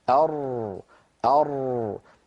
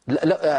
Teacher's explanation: لاحظوا بان انحراف الراء الى الداخل بخلاف انحراف اللام